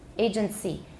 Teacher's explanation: It is possible to hear an inserted T in both agency, grievances, agency. 就 是 它 夹 在 两 个 没 有 中 音 的 音 节 当 中. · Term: Epenthesis